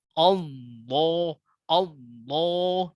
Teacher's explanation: mengucapkan huruf lam tafkhim pada lafaz Allah dengan membulatkan bibir